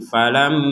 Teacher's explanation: di sini ada mim bertasydid, kita membacanya dengung. Falamma, jangan sekedar falamma, tapi harus ada dengungan di rongga hidung kita.